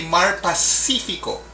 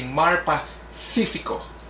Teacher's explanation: followed by an i the c makes a th sound so you don't say mar pacifico but you say marpa sifico